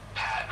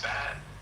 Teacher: for the P sound, you just push air out without using your vocal cords, so it's a soft, breathy sound